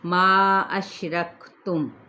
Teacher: ما کو 4 حرکت کھینچے